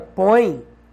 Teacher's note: Porque na língua portuguesa, quando tem o encontro oi, ou seja, o O seguido do E, como por exemplo na palavra põe, você nunca tem dúvida de que o O é uma vogal, porque tem som de O, e o E é uma semivogal, que tem som de I